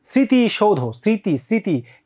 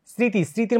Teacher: ম ফলার উচ্চারণ হয় না কিন্তু চন্দ্রবিন্দু হয়